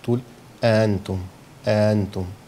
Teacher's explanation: بين الهمزة والفتحة، لا هي همزة ولا هي فتحة، تبقى حاجة مش واضحة مش مميزة. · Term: الهمزه المسهله